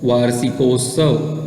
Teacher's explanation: अ उ मिलकर ओ हो गया